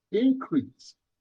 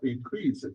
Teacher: if we put a stress on the first syllable, increase, this is noun. If we put stress on the second syllable, increase, this is verb.